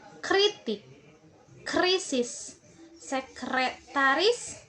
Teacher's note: K, K, K. Dan bunyi R dihasilkan oleh ujung lidah yang bergetar menyentuh langit-langit keras.